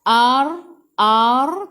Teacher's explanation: Sebelum ra ada baris atas, baca dengan tebal, takhim, lepas tu matikan dengan huruf dad.